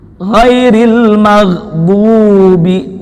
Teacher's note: Gin ketika sukun tidak memantul karena Gin bukan termasuk huruf qal qalah